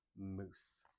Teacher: with the M, we close our lips, and then we hum a little bit.